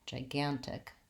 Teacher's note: Lastly, I have the vowel I and the K sound at the end. So I want to be short and light on the ji and the tick. Gigantic.